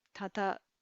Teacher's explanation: there's a bit of nasalization that happens in the central dialect here tata you you'll tend to hear an n sound before a